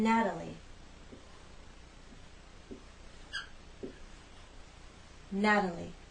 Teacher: we have the flap te in Natalie